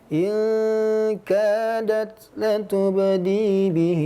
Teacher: jangan terlalu panjang huruf ha-nya, silah qasirah 2 harakat.